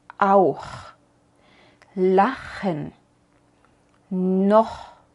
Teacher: Cuando la vocal anterior es A, U o O, pronunciamos la CH más atrás. Subimos la lengua más atrás en la boca y decimos auch, lachen, noch.